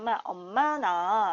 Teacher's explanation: 그래서 이 비음이라고 하는 것은 자음이 소리가 나는데 코를 사용해서 소리를 낸다는 거예요